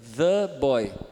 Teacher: é o fricativo plano interdental sonoro e o schwa